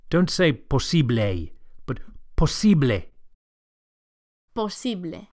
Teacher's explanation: And the final E sound, posible, is a pure vowel, not A.